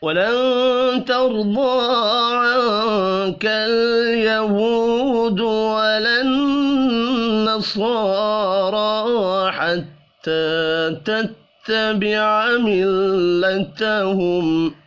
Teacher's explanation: نون ساکن کے بعد تا ہے، اخفاء حقیقی ہوگا